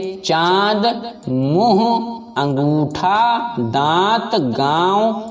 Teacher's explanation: चंद्रबिंदु का उच्चारण करते समय हवा नाक और मुख दोनों से निकलती है उसे अनुनासिक कहते हैं इस का चिन्ह चंद्र बिंदु अंक चंद्र